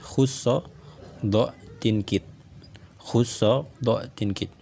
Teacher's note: Semua huruf yang ada pada khusso do tinkit ini dia dibaca dengan tebal karena dia adalah huruf isti'la.